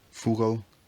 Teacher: the O weakens and centralizes giving Fugal